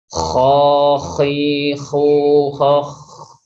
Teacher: sifat selanjutnya yaitu rokhwah atau rikhwah, yaitu mengalirnya suara.